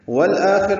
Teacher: والآخر میں واو کو اب الآخر کے لام سے ملائیں گے. یہ حمزہ اقصی حلق سے ادا ہوتا ہے اور حروف حلقی میں سے ہے اور حروف قمری میں سے ہے، جس کی وجہ سے یہ لام پڑھے جا رہے ہیں.